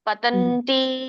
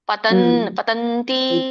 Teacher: ತಿ ಮಾತ್ರ ಹೆಚ್ಚಿಗೆ ಕೇಳಿಸುತ್ತೆ